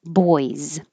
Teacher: the S on boys sounds like a z